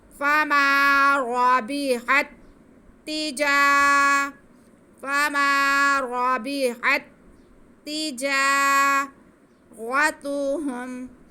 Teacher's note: را پہ زبر ہے اس لیے را موٹا پڑا جائے گا. آگے تا پہ پیش, ہا پہ پیش, میم ساکن, کسی کو کھینچنا نہیں ہے.